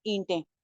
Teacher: نون کی آواز کو چھپا لیتے ہیں، نون کی آواز کو ہائیڈ کر کے پڑھتے ہیں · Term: اخفا